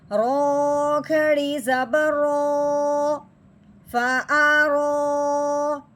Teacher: رو کے اوپر کھڑی زبر ہے، رو کو ہم نے ایک الف کے برابر لمبا کرنا ہے اور ساتھ ساتھ موٹا کرنا ہے